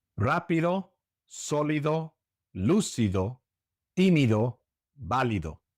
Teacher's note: All of these words in this category also have the accent on the third to last syllable